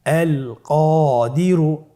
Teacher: কফের পরে আলিফ হরফটি এসেছে, তাহলে আলিফ হরফটিকে মোটা করে পড়তে হবে